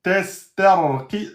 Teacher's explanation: Teste, et après vous emphatisez le ra.